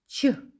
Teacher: губи трохи витягнуті вперед кінчик язика міцно притиснути до піднебіння різким коротким подухом повітря виштовхуємо звук ч без голос він нагадує шипіння звук ч приголосний і завжди твердий в українській мові тому в